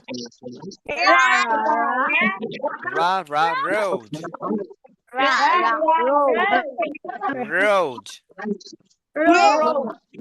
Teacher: র সাউন্ডটা উচ্চারণ করার সময় তোমার জিহ্বাটা একটু উল্টে যাবে, যেমনটা তোমরা ঢং করে কথা বলার সময় বলো আর কি।